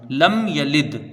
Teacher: میم ساکن کا قاعدہ اظہار شفوی، یعنی میم کو ظاہر کر کے بغیر غنہ کے جلدی پڑھیں گے